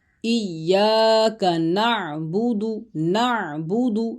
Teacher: ایاک نعبد، نعبد عین کی آواز نکالنی ہے، عین حلق کے درمیان والے حصے سے ادا ہوتا ہے،